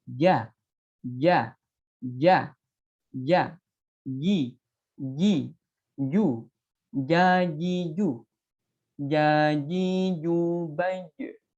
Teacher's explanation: huruf jim itu melafalkannya tidak boleh disertai hembusan nafas yang disengaja. Ya, cara melafalkan huruf jim tadi karena makhrajnya ada di tengah-tengah lidah yang hampir bertemu dengan langit-langit. · makhrajnya ada di tengah-tengah lidah yang hampir bertemu dengan langit-langit. Nah, ini cara melafalkannya bukan j, bukan ja, ya, bukan aj, bukan seperti itu, tapi melafalkannya ja, ja, ja, ja, ji, ji, ju, jaji, ju, jaji, ju, baju.